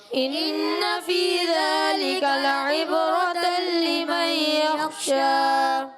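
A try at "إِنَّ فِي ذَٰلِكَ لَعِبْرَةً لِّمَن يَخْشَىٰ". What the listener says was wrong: غنہ چھوڑ دیا. ان فی ذلک لعبرۃ لمن یخشا.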